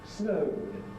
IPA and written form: snəʊd (snowed)